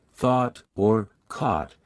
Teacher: British RP tends to have rounded vowels. Especially in words like thought or caught, which are pronounced with a rounded sound.